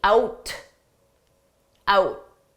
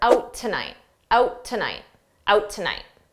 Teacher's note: But tonight starts with a T. So I can use that T from tonight for both words if I say them together.